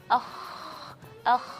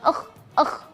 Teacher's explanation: rakhaw huruf rakhawah ini berarti dia tidak berhenti di situ saja tapi kita melepaskan ya tidak ada berhenti nafasnya